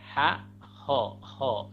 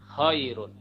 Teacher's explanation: Kha itu ada ngoroknya, ada seperti mohon maaf orang mau buang dahak gitu ya. Jadi jangan sekedar mengubah ha menjadi ho ya.